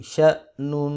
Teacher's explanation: شین زبر حمزہ شا، نون 2 پیش نون، شأنون، حمزہ کے اوپر قلقلہ نہیں کریں گے، بعض لوگ قلقلہ کرتے ہیں